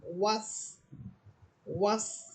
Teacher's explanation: ওয়াও ঠোঁট গোল করে পড়বেন